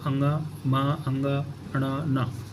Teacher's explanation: यह सभी नाक की सहायता से बोले जाते हैं इसलिए इनको क्या बोला है अनुनासिक वर्ण बोला है